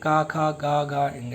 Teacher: ये सारे के सारे कंठ से बोले जाते हैं